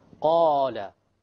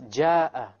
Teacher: Qala is heavy, deep. Versus ja'a. Look at how light the alif is. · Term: letters of tafkhim